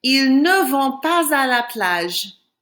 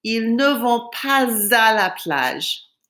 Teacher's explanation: I have to pronounce the S on the end of pas, and it's because there's a vowel coming after it.